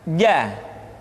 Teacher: huruf ja dikeluarkan dengan menyentuhkan tengah-tengah lidah dengan langit-langit